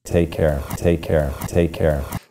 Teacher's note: the words take and Care receive pretty much the same stress